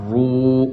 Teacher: کھینچیں گے کیونکہ یہ واو مدہ ہے۔ واو ساکن سے پہلے پچھلی ویڈیو میں نے آپ کو پڑھا چکا ہوں، واو ساکن سے پہلے پیش آ جائے تو واو مدہ بن جاتا ہے۔